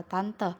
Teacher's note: vokal e pada bagian tengah atas tak bundar